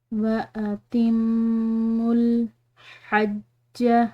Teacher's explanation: यहाँ पर मीम मुशद्दिद है तो मीम मुशद्दिद पर गुन्ना किया जाता है। यहाँ पर हम गुन्ना करेंगे, इसको गुन्ना के साथ पढ़ेंगे।